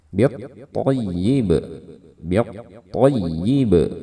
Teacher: ini ada ba di sini akan menjadi sukun dan kita akan membaca dengan qalqalah, biat toyib, biat toyib, ya, suaranya dipantulkan. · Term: qalqalah kubra